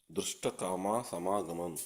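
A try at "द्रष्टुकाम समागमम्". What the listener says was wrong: Drashtu, not drashta. Drashtukama samagamam.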